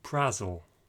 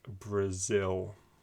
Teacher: we're wanting to stress the second syllable and so it will sound like brazil can you say that